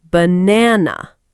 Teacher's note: in the word banana, we usually stress the middle part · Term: word stress